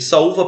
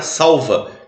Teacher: Olha só a diferença de saúva para salva, que se escreve até com L, mas tem som de U.